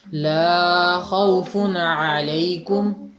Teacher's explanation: لا کی آواز تھوڑی سی لمبی کر دی آپ نے، 1.5 گنا تقریباً